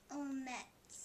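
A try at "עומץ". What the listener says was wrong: Omets. Very nice, okay?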